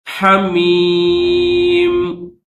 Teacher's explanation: وقف کریں گے تو صرف میم کی آواز نکالیں گے